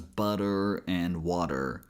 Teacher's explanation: Then in the last syllable t is actually a flap t as we see in words such as butter and water